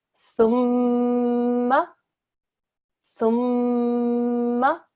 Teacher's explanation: We join it in the same way as we would do any other mushaddad letter, but we press down on the meme and make a ghunna sound also. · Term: meme mushaddad